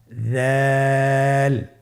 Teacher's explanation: দালের মাখরাজ হলো জিহ্বার আগা সামনের উপরের 2 দাঁতের আগার সঙ্গে লাগিয়ে উচ্চারিত হয়।